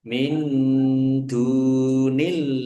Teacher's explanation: nun sukun bertemu dengan huruf dal bacaan ikhfa dibaca samar-samar